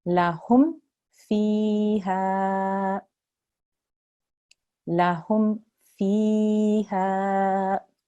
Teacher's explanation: you're not to hold on the mim, you have to make it clear and short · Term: Mim Sakin